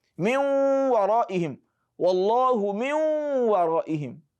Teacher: While you are transiting between the nun sākinah and the waw, naturally the ghunna sound will come out. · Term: idgham naqis